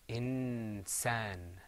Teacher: because the seen is pronounced in a close place next to the noon, this hukm here is called ikhfa.